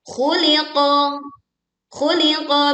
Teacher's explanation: Berikutnya di ayat ke-6, khuliqa. Khu tebal, li tipis, qa tebal. Khuliqa. Perhatikan suaranya.